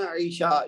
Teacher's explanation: یہ ایکچولی ہے عشاء، ایک تو اس میں یہ ہے کہ عشاء نہیں کہنا، عشاء یہ عین ہے، حمزہ نہیں ہے